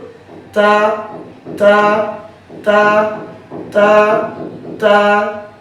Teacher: জিহ্বার আগে সামনের উপরে দুই দাঁতের গোড়ার সঙ্গে লাগিয়ে তা হরফটি উচ্চারিত হয়। তা হরফটি পড়ার সময় আওয়াজ নরম হবে, চিকন হবে, নিচের দিকে দাবিতে হবে, হামস বাতাস চালু।